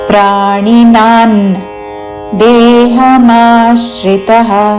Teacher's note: ప్రాణినాన్ అనుస్వారము త వర్గంలోని అనునాసిత న్ ఉచ్చారణ